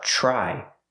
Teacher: TR makes a ch sound like chicken, plus the R